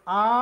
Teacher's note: এবং জিওবা সামনের দিকেও আসে না জিহবা পিছন দিকেও যায় না আ বললে জিহোবা শুয়ে থাকে অপরিবর্তনীয় একবারে নিচের দিকে পড়ে থাকে জিওবাটা